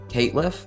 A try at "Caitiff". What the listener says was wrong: There's no L in there. It's just Caitiff. Caitiff.